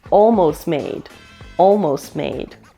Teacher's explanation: the final T in almost is dropped and connects directly with made. So what we hear is almost made, almost made.